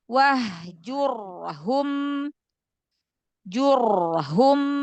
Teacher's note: ro sukun sebelumnya damah dibaca tafhim tebalkan